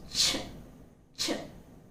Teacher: notice that the tongue is touching firmly the hard palate. Okay, it's raised against the hard palate and it's almost touching the teeth ridge and raised towards the hard palate. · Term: voiceless consonant